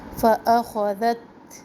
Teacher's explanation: تا میں ہمس، سانس باہر کی طرف آتی ہے. اخذت ایسے بھی نہیں پڑھنا، ہلانا بھی نہیں ہے، اور زت سختی بھی نہ ہو ذال میں، اور تا میں ہمس کو بھی ختم نہ کرے، ذات ایسے پھر ہمس ختم ہو جاتا ہے.